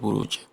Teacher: di akhir ayatnya Al-Buruj ini ada huruf jim, maka dibaca qalqalah atau dipantulkan